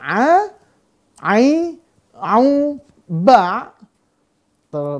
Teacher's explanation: berasal dari tenggorokan Tengah sifatnya ada jahr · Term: Ain